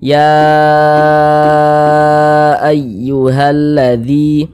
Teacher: kita panjangkan empat harakat atau kira-kira empat ketukan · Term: Mad Jaiz munfasil